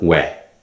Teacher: the first W Glide is made up of the two basic vowels o and E and it's pronounced where this where is